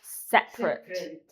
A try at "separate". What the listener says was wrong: Ese sonido vocal otra vez del E.